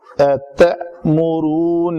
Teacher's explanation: یہ دوسرا حمزہ جزم کے ساتھ ہے تو اس کو جھٹکے سے پڑھیں گے